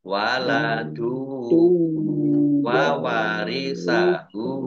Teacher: Waladu domah tanwin bertemu dengan huruf wawu, bacaan idgham bihuna masuk dengan mendengung yaitu mendengung wawu ditahan dua harokat